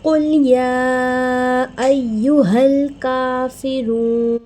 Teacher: قوف حرف مستعلیہ میں سے ہے، قوف کو موٹا پڑھتے ہیں، لام کو ہمیں مجہول نہیں کرنا، ہلانا نہیں ہے، ٹھیک ہے۔